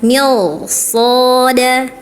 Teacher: ketemunya huruf isti'la berharokat fathah ya, dibacanya tebal, mirsada ya, ra-nya tebal ya.